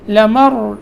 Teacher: لمر یہاں را موٹا ہوگا کیونکہ ساکن اس سے پہلے زبر